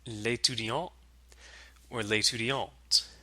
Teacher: With the elided le or la, they become l'étudiant or l'étudiante. We just get the L sound out of le or la.